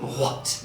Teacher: Yes, the voiceless WH sound.